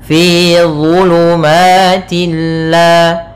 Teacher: dha makhrajnya sama seperti huruf dal dan tha, tapi pangkal lidahnya dia terangkat dan idba. Pangkal lidahnya terangkat. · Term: huruf isti'ala